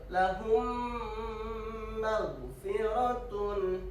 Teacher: mim mati bertemu huruf mim, bacaan mim dilebur dan didengungkan